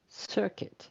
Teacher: in this word circuit the stressed syllable is the first syllable